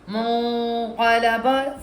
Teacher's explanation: یہاں بھی ہم نے کیا دیکھنا ہے, نون کے بعد نہ حروف حلقی, نہ یرملون, نہ با, تو کیسے آواز وائس آئے گی, منقلبا, فوری طور پہ جو نون ہے ناک کے اندر چلا جائے گا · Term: اخفا غنہ